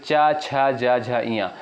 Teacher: इनका उच्चारण साथियों तालु से होता है। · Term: तालव्य वर्ग